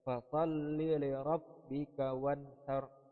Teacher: Pada kata wanhar merupakan huruf idhar khalqi sebab ada nun mati yang bertemu dengan huruf ha, dan ini wajib dibaca dengan terang kepada huruf nunnya yaitu wan.